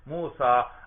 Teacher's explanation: جیسے دیکھیے موسیٰ، اس کے آخر میں الف مقصورہ ہے، دیکھو عام الف ہے، لمبا الف، اس کو لمبا نہیں کرنا زیادہ بھائی، الف مقصورہ عام الف